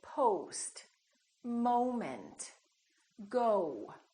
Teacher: So it's actually two sounds, it's O and U together. So you have to move your mouth from O to U